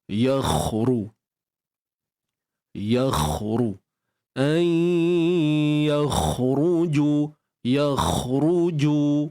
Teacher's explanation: Jadi masukkan nun ke dalam ya serta kekalkan sifat dengung dalam kadar 2 harakat. Kemudian kha yang mati ni kita tebalkan, angkat pangkal lidah kita untuk dapatkan tafkhim ketebalan pada kha ni